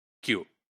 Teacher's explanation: y sound, which is palatal approximant, it is voiceless in q, right? So what is happening here is that these approximants, they are basically devoiced.